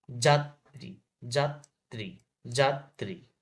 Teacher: র বর্ণের, র বর্ণের উচ্চারণ র, তবে র ফলা হিসেবে এর উচ্চারণে বৈচিত্র্য আছে। শব্দের মধ্যে বা শেষে কোনো ব্যঞ্জনের সঙ্গে র ফলা থাকলে দ্বিত্ব সহ র ফলা উচ্চারিত হয়।